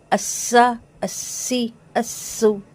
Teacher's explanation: سین کی سیٹی واضح آنی چاہیے، باریک سیٹی، لیکن موٹی سیٹی آ جائے گی تو وہ صوت بن جائے گا.